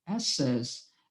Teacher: a sílaba tônica é a última